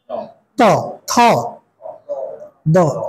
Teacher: ত বললে জিহ্বাটা কিন্তু ফ্ল্যাট থাকে এবং জিহ্বার অগ্রভাগ আর দাঁতের অগ্রভাগ ওই দুইটার সংস্পর্শ হয়। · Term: দন্ত বর্ণ